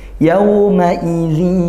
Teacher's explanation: itu juga makhrajnya dari kisyum dari hidung sehingga ini juga harus sebagian dari bunyi mulut kemudian sebagian dari mengeluarkan dari hidung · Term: gunah